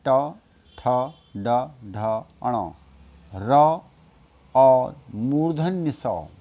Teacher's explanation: इनका उच्चारण स्थान है मूर्धा मुर्धा वह भाग है आपके गले में जीव के जड़ का